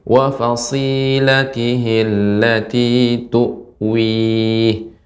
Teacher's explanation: Perhatikan shad ketika sukun ketika kasrah tetap sifat shad adalah mengalir. Wa fasi, lebih banyak lagi pengucapan desisnya.